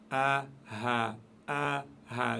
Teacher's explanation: Le son part de tout en bas de la gorge, en dessous de la pomme d'Adam. A, ha. Si vous mettez vos 2 doigts, vous pouvez sentir une vibration.